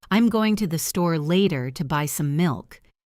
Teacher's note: Did you hear how going to became gonna and to buy kind of blended together?